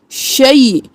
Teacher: और शे इन नहीं करना, शीन ज़बरिया शई, शई, और इख्फा करेंगे क्योंकि तनवीन के बाद हरूफ हल्की में से कोई हर्फ नहीं है, तो यहाँ पर हम इख्फा करेंगे, नाक में आवाज़ को छुपाएंगे